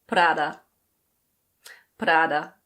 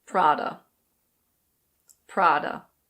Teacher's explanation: in English, we don't roll the R at all. It's just Prada.